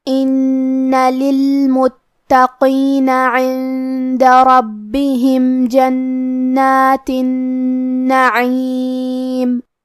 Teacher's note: کلمت ان میں کیونکہ نون پہ تشدید ہے لہذا ہم یہ حرف کو 2 حرف کے برابر پڑھیں گے کیونکہ تشدید کی اصلیت 2 حرف ہے.